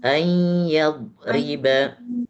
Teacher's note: Innallaha la yastahyi ayadriba matalan a itu juga naik ke hidung. Ketika baca ay itu suaranya suara ke hidung.